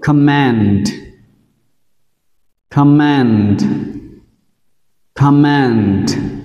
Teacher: Mặc dù là man nhưng trọng âm vẫn rơi vào com. Đây là một danh từ.